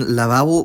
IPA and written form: laˈβaβo (lavabo)